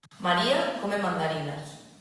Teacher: it's pronounced normally and with a low final tone.